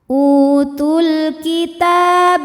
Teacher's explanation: ta ini hukumnya tetap mad tabi'i karena baris fathah panjang di atas huruf ta dan depannya tidak dimatikan. Maka huruf ta ini hanya boleh dibaca panjang 2 harokat.